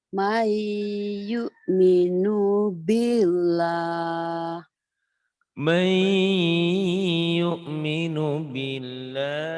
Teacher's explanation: nun mati atau tanwin ketemu iya, ini juga sama idgham bi gunnah, dileburkan, dimasukkan, disertai dengan dengung.